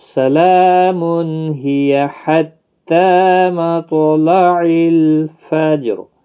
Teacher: اگر ملا کر پڑھنا ہوگا سلام ہی حتی مطلع الفجر، تو یہاں پر تنوین کے بعد حروف حلقی کا ہا ہے، اس لیے تنوین کو ظاہر کر کے پڑھیں گے